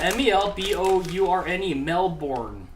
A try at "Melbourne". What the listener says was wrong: I don't think they pronounce the R. I think it's Melbourne. Something closer to that. Like, they don't pronounce the R. It's not born.